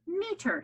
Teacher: So my accent is on the first syllable, no accent on the second